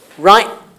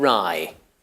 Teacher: the only difference would be in the length of the vowel